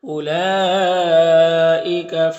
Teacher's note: مد متصل ہے، اس کو 3 سے 4 الف کے برابر کھینچ کر پڑھتے ہیں · وقف کریں گے تو دال میں قلقلہ ہوگا اور مد عارض وقفی ہوگا · فی میں یا مدہ ہے ایک الف کے برابر کھینچیں گے، ضاد حروف مستعلیہ میں سے پر پڑھیں گے، لام میں کھڑا زبر یہ الف مدہ کی طرح ہوتا ہے۔